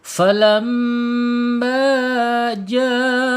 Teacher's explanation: hamzahnya tersambung menjadi mad wajib muttasil ya, panjangnya 4 sampai 5 harokat